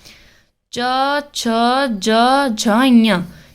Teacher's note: ये कहां से बोला जाता है तालू से तालू तालू यानी कि जीव के ऊपर से